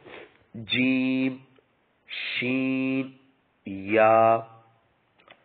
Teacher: زبان کے درمیان اور تالو کے درمیان سے ادا ہوتے ہیں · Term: حروف شجریہ